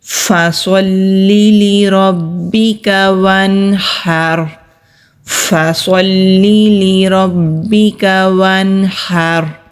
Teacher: اب آگے را ساکن ہے اور پھر وقف کی علامت ہے، تو را ساکن سے پہلے زبر ہے تو پھر ہم را کو بھی موٹا ہی پڑھیں گے